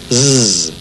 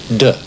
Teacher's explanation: to make the Z sound, we put our tongue toward the front of our mouth, leave a little groove for the air to flow through, and turn on the voice